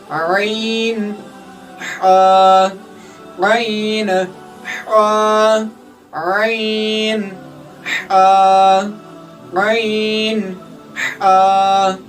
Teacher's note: हलक का जो दरमियान वाला हिस्सा है वहां से दो हरूफ अदा होते हैं जो कि ऐन और हा है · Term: वस्त हलक